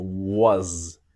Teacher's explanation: So, the s in was sounds like a Z.